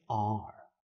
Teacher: your tongue is high up in your mouth and pushed back so that the sides of the tongue are in contact with the insides of your upper molars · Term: standard american r